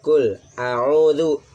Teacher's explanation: Qul a'udzu, di sini adalah hukumnya mad tabi'i ya. Baca panjangnya 1 alif atau 2 harokat.